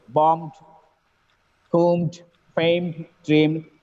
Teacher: The last sound is M. When it gets ed, the sound should be D at the end.